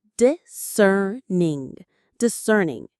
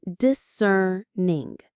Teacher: The stress is on that second syllable.